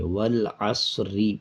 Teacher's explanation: آیت کو جب آیت پہ روکیں گے نہیں، وقف نہیں کریں گے، تب را کو باریک پڑھیں گے، والعصری پڑھا جائے گا۔